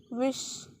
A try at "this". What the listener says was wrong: Not wish. This. This. This. This. So you can see the tongue. This. Release it. This. This. This. This.